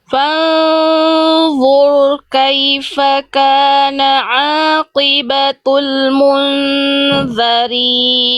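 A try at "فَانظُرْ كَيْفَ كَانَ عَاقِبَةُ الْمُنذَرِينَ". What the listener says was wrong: Sekarang ro-nya jelaskan. Bunyi ro-nya jelaskan. Jangan samar bunyi getarannya.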